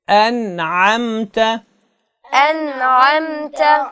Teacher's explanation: نون کے بعد عین آ رہا ہے حروف حلقی میں سے، تو یہاں پہ آپ غنہ آنی کریں گے، یعنی آپ نے طویل آواز ناک میں نہیں لے کے جانی